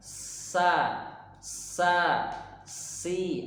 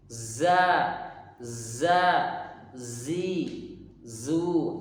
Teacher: tajamnya suara karena ia keluar dari celah yang sempit antara ujung lidah dengan 2 gigi seri atas dan bawah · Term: shafir